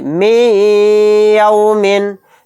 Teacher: میم کو یا میں ملاتے ہوئے غنہ کے ساتھ پڑھیں گے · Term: ادغام مع غنہ